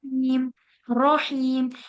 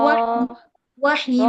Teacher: देखिए, अब जबान का यहाँ पर देखें, जबान का जो हिस्सा है वो टिप ऑफ द टंग जो है वो कहाँ लगी हुई है, हमारे ऊपर के दांतों के मसूड़ों की तरफ। लेकिन हैवी करने के लिए क्या हो रहा है, पीछे की जो जबान है वो तालू की तरफ उठ रही है। रॉ, रॉ। लेकिन होठ बिल्कुल भी गोल नहीं हो रहे हैं।